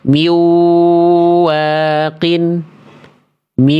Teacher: Karena enggak ada dengungnya. Dia enggak sengau nih yang A nih.